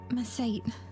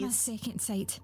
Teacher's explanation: her T sounds are very clipped for sure